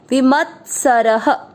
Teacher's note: तीतो, वी म के साथ आधा तब विमत, सर, दोनों अक्षर पूरे, दोनों में अ मिक्स करेंगे। सर, र में अ की मात्रा तो विसर्ग को पढ़ेंगे ह, विमत सरह। दूसरा चरण फिर से, द्वंद्वातीतो विमत सरह।